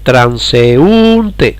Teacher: porque es una combinación de vocales abierta más cerrada está pero lleva el golpe de voz en la vocal cerrada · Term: hiato